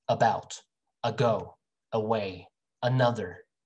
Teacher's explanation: all of those words start with uh not e · it's not oo, it's not eh, it's in the middle of the mouth.